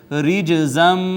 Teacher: جیم حروف قلقلہ میں سے ساکن آئی ہے، اس پہ ہم نے کیا قلقلہ